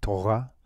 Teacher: the resh is not pronounced like the Spanish, not like the Spanish R. It's not. You don't roll it with your tongue off the roof of your mouth. It's actually it's also a guttural letter, but you don't really hear it much.